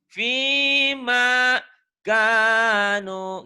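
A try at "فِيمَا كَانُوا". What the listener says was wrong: Kanya panjang. yang penting panjang pendeknya dulu ya.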